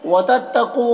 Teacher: وتتقو، قاف کو پر پڑھنا ہے، حروف مستعلیہ میں سے ہے اور یہاں پر واو مدہ ہے، اسے ایک الف کے برابر کھینچیں گے۔